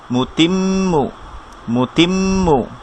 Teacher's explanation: এখানে আমরা কেন একটু ধরছি, কারণ হচ্ছে মিমের উপর তাসদিদ, মিমে তাসদিদ গুন্না হবে